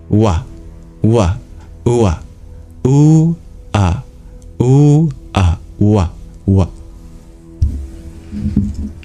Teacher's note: W is a semi-vowel. W is just really transitioning quickly from a U to an A.